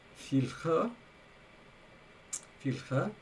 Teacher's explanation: The barred I is vocalizing the R. The R is becoming a ya, and we're also losing a schwa at the beginning. So we're losing the two vowels and left with filche. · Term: losing a barred I